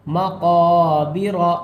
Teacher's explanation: لیے ایک الف کے برابر کھینچ کر پڑھ رہے ہیں، مقابر، را کو تھوڑا موٹا کریں گے یعنی پر کر کے پڑھیں گے